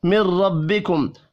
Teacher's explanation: را کو زبر کی وجہ سے پر پڑھنا ہے